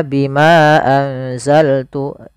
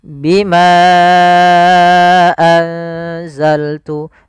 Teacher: maka Bimanya kita panjangkan sepanjang empat harakat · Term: Mad Jaiz munfasil, mad jaiz munfasil